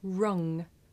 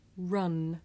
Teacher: Now ng is made at the back of the mouth and n is made behind the teeth.